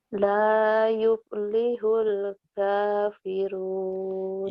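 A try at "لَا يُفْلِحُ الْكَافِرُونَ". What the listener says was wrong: yupnya kayak orang Sunda, F-nya yuf gitu, V. Jangan P ya, F Fanta gitu. Lanya panjang. La yuf lihul kafirun.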